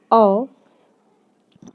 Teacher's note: कंठौष्ठ्य में आते हैं जो गले तथा होठों से बोले जाते हैं। गले से, कंठ से और होंठ से बोले जाते हैं।